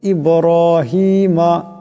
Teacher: ইব্রাহিমা এখানে বা সাকিন, বাও কলকলা হরফ, আওয়াজটিতে একটি জটকা খাবে